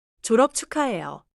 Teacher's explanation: 받침 비읍 소리를 짧게 닫고 이어 말해요. Do not add an extra vowel after it.